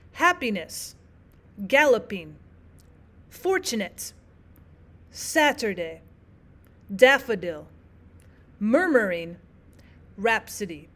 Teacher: So your one stressed syllable comes first and there is two unstressed syllables afterwards that make the dactillic pattern. · Now dactillic is the opposite of anopestic. You have one stressed syllable and then it's followed by two unstressed syllables. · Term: dactylic